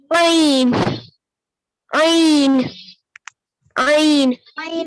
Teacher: ऐन ऐन ऐन ऐन को हम हलक से निकालेंगे